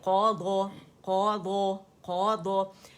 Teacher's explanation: क़ाफ जो है ये मोटा है, लेकिन दौद जो है ये मज़ीद मोटा है और सुकून के साथ है